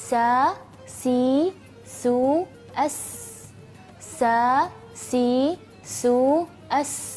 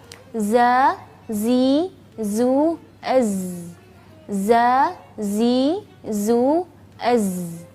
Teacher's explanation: ujung lidah ee berada pada halaman dua gigi seri bawah sehingga suara Zai Sin Shad keluar di antara dua gigi seri atas dan bawah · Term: sifat safir